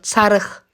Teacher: Çarıq sözündə isə söz sonu Q ilə bitdiyi üçün X samiti kimi tələffüz olunur. X səsi verir.